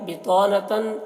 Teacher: تو کو پر پڑھنا ہے اور تو میں الف مدہ ہے